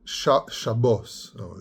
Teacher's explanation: the rounding of the kamat into an O known as comets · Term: rounded kamat